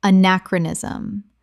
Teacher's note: Five syllables with the stress on the second.